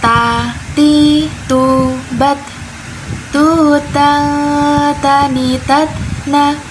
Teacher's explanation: huruf ta itu makhrajnya atau tempat keluarnya ujung lidah bertemu pangkal gigi seri atas